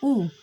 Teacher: पश्च संवृत स्वर है क्योंकि इसका उच्चारण स्थान होता है जीभ के पिछले भाग से, और इसको बोलते समय मुंह की आकृति गोल हो जाती है, इसी कारण इसको पश्च संवृत स्वर कहा गया है।